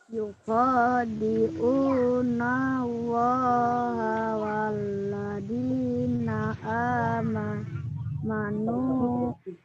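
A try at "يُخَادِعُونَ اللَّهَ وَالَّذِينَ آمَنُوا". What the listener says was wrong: Ya, sukun. Di amanunya sukun. Walladzi. Za, lidahnya dikeluarkan ujungnya. Walladzina amanu.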